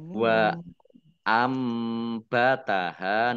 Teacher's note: nun sukun bertemu dengan huruf ba, bacaan iklab. Ya, baknya dibaca mim terlebih dulu. Nah, nunnya dibaca mim juga.